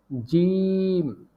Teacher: ওপরের তালুর সঙ্গে লাগিয়ে উচ্চারিত হয় জিম একটু লক্ষ্য করে বলুন জিহ্বার মধ্যখান তার বরাবর উপরের তালুর সঙ্গে লাগিয়ে উচ্চারিত হয়